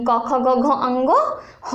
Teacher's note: ओ आ कवर्ग यानी क ख ग घ अंगो ह और विसर्ग का उच्चारण स्थान कंठ है